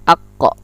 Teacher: Dan dia termasuk qalqalah, mentul. Akko kalau kita sukunkan.